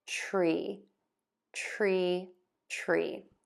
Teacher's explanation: I have my lips in that square, tense shape for that R sound as I start my T so that I'm ready